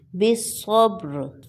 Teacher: با پر کلکلا ہوگا، یعنی کلکلا اس کی آواز پلٹ کر آئے گی، اور را کو ساکن کر کے موٹا پڑھیں گے۔